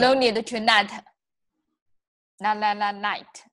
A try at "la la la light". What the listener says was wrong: So it's that L sound, right?